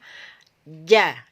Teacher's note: kedua ketika diharakat fathah adalah syidah sidah adalah berkaitan dengan suara suaranya tertahan terputus tidak bocor ya jadi ketika kita mengucapkan huruf ja atau Jim itu nafasnya nafas kita dan suara kita tertahan terputus